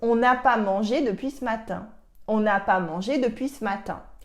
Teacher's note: On n'a pas mangé depuis ce matin. And here, because of la liaison with on, you cannot say if there is a ne or not because they sound exactly the same. La liaison makes the ne removal completely transparent.